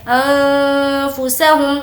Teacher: نون کی آواز کو ناک میں چھپائیں گے کیونکہ نون ساکن کے بعد فا ہے جو کہ حرف اخفا کے لیٹرز میں سے ہے.